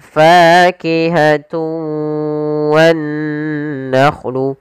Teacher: Nah, di sini juga kita namakan dengan idgham naqis, yaitu idgham arti memasukkan dengan tidak sempurna. Ada yang kurang atau masih sedikit menyisakan suara nunnya